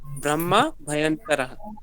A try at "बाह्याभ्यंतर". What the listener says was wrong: बाह्याभ्यंतर, ब्रह्म नहीं है, बाह्याभ्यंतर।